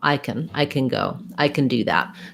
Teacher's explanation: be short and unstressed and the vowel a is going to actually get reduced it sounds more like can or even just can with no